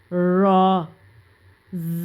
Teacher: را زبان کی پشت جب اوپر والے سامنے کے 2 دانتوں کی جڑوں سے لگے گی پشت، تو خود بخود وہاں سے ادا ہو جائے گا